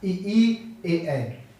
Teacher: जीव हमारी बाहर की तरफ निकलने का प्रयास करती है, इसलिए इसे अग्रस्वर कहते हैं।